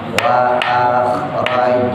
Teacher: Wa akhraj pantul, jimnya qalqala subro